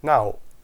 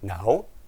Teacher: One is low tone and one is rising tone.